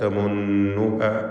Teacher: ഇതിൽ ഷദ്ദുള്ള നൂനിനെ മണിക്കുക. നൂൻ മുഷദ്ദദ.